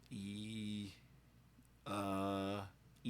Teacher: The e uh e is kind of in the front more towards the front of your mouth. The tongue gets kind of high. And then e you can feel the constriction move backwards.